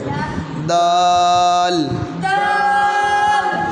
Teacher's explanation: جب دال ادا کرتے ہیں تو اینڈ پہ لام کی آواز آتی ہے